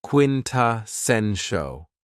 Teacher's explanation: this word has 4 syllables, and the stress is on the third syllable